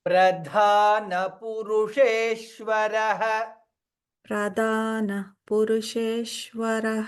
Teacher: Dha can be Mahaprana. Dha is Mahaprana, so little more.